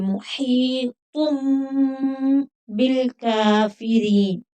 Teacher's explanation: کاف کو تھوڑا کھینچ کر پڑھیں گے، اوپر کھڑی زبر ہے. غا کو بھی تھوڑا کھینچ کر پڑھیں گے لیکن باریک پڑھیں گے کیونکہ غا کے نیچے زیر ہے.